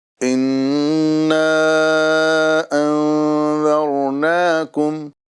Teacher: یہاں گنہ بھی کرنا ہے اور ساتھ ہی ساتھ مد منفصل بھی کرنا ہے